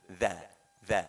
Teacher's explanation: Hati-hati antara da dengan dzal, ya. Dzal itu membunyikannya ujung lidah kita keluar sedikit, ya, digigit sedikit supaya beda antara dza dengan dal. Dza, ya, ujung lidah, ya, ngintip-ngintip lah sedikit gitu.